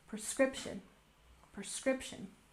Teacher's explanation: just make sure to emphasize the second syllable